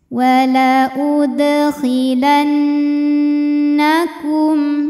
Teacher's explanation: Nun tasydidnya dihukumi dengan gunnah musyaddadah karena nun tasydid. Maka ini kita bunyikan dengan dengungan.